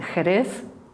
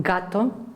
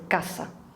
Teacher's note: if we go further back, at the velar region, we have the H sound, as in Jerez, the G as in gato, and the K as in casa